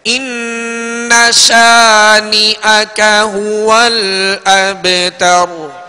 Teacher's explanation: نون اور میم جب مشدد ہوں، ان کے اوپر شد آ جائے، شد 3 دندانت والی شکل کو شد کہتے ہیں، تشدید کہتے ہیں، یہ اگر نون اور میم پر آ جائے تو اس میں غنہ ہوگا، 1 الف کی مقدار یعنی 2 حرکت کی مقدار آواز جو ہے ناک میں لے جا کر ٹھہرائیں گے